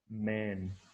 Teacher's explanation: So here two lips, they are joined together while the nasal sound is produced. The vocal cords vibrate, producing voice. That is why this is a voiced bilabial nasal or bilabial consonant.